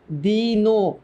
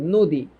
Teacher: তাহলে এইটার উচ্চারিত যখন রূপটা আমি লিখবো, তখন দীর্ঘই দিয়ে আমি লিখতে পারবো না, কারণ দীর্ঘই কোনো উচ্চারিত রূপ না, এটা শুধুমাত্র লিখিত রূপ। দীর্ঘের উচ্চারিত রূপ হচ্ছে হ্রস্বই, সে হ্রস্বের মতো করে উচ্চারিত হয়। এই কারণে যখন আমি দিনো, এটার উচ্চারণ কিন্তু দিনো, নট দিন, দিনো।